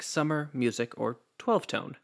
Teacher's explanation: the trochee, which puts the stressed syllable first